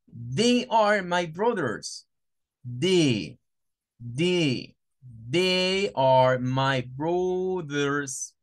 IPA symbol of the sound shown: ð